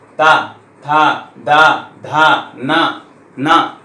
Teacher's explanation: ता बोलेंगे तो ऊपर वाले दांत में स्पर्श करेगा, अगर नहीं करेंगे तो ता निकलेगा ही नहीं